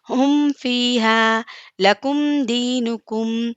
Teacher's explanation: میم کو ظاہر کر کے پڑھیں گے